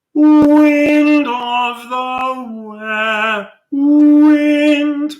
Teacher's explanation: please try and make sure that your W at the beginning of wind is not principally a consonant, wind of, but a vowel.